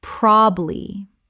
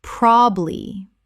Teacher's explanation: Two syllables in natural speech. The middle syllable is almost always dropped.